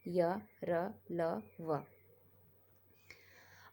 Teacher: इनको बोलते समय हमारी जीभ हमारे मुंह के किसी भी भाग को अच्छी तरह से छूती नहीं है, यानी कि टच नहीं करती है। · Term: अंतस्थ व्यंजन